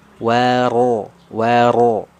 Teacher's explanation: di sini huruf ro berharakat fathah ya sudah kita bahas kemarin huruf ro yang berharakat fathah ya takhim dibaca tebal